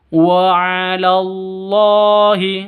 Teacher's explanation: lafdul jalalah panjang 2 ketukan karena masih ada di tengah, maka panjangnya 2 ketukan.